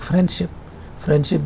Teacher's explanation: [Music] and was not included in the transcription we simply don't there is also typically no d sound included in the everyday pronunciation of the word